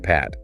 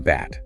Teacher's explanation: the only difference between the two sounds is whether your vocal cords are vibrating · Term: Voice less voiced pairs